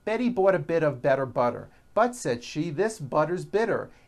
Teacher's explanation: notice that you do not hear any T sounds they're only DS which are voiced